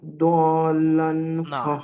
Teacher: 3 থেকে 5 আলিফ অর্থাৎ 5 আলিফ পরিমাণ টান হবে এই মদ্দে লাজিমটা সব থেকে বেশি টান